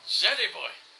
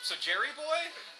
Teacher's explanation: The lateral glide being the L sound, and the retroflex glide being the R.